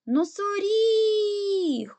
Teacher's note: куди падає наголос на і тобто третій склад буде наголошений